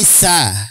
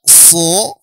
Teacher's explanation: sa tipis sa datar lidahnya · kalau yang istiala maka posisi lidahnya nanti akan menggembung pangkal lidahnya ya. Menggembung posisi pangkal lidahnya.